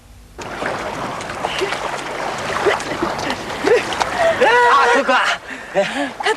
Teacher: it ended with a rising intonation